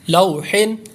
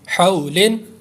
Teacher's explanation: لام واو زبر لو، حا دو زیر حن، لوحن، حا واو زبر حو، لام دو زیر لن، حولن. دونوں میں واو لین کا قاعدہ لگ رہا ہے اس لیے لمبا نہیں کریں گے